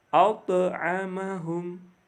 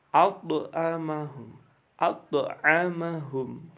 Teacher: Yang kelima, huruf ta. Ta sama dibaca memantul karena ta berharokat sukun.